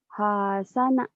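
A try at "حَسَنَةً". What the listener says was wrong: Nggak ada yang panjang. Hasana.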